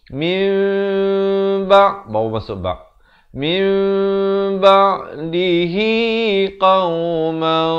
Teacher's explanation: Jangan lupa cara bacaannya ditukarkan bunyi nun kepada bunyi mim. Daripada bunyi min jadi mim. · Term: hukum iqlab